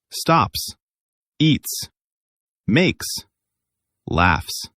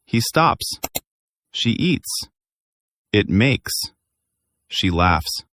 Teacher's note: your throat doesn't vibrate for that S sound. It's just air.